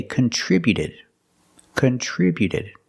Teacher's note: the T before the Ed is between vowels so it's a fast D